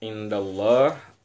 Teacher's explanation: Indallah, kalau sebelum Allah barisnya fathah, dal sebelum kata Allah itu berbaris fathah, maka cara bacanya dengan cara baca yang tebal atau taghliz